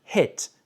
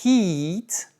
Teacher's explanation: hit, c'est frapper avec un i court, mais heat avec un i long, ça veut dire la chaleur. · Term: longueur des voyelles